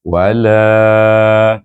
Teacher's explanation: mad asli kerana sebelum Alif ada baris di atas lam itu jadi kita baca mad asli dua harakat